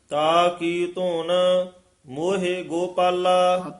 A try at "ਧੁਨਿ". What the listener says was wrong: ਧੁਨ ਜਿਹੜਾ ਪਦ ਹੈ ਪੋਲਾ ਹੀ ਉਚਾਰਨ ਕਰਨਾ, ਧੁਨ ਨਹੀਂ ਕਹਿਣਾ।